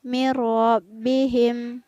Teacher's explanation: Kemudian pada lafaz mirabbihim, bandingkan ya dengan lafaz sebelumnya tadi. Mirabbihim ada nun sukun yang bertemu dengan huruf ro, maka nun sukunnya tidak terbaca. Jadi di sini hukum bacanya adalah idgham.